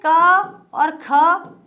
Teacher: वर्ग का पहला और दूसरा वर्ण अघोष होता है